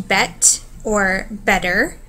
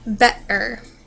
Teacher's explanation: there is the T or the glottal stop in bet or better